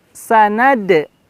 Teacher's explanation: Lihat, terasa sekali pantulan dal ya di ayat ini.